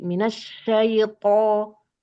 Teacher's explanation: Tebalkan lagi To-nya, angkat pangkal lidahnya.